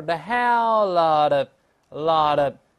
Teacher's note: 这个字母▁T▁在这轻轻浊化了